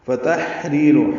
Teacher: ہا ساکن ہے، اس پہ ہمس ہوگا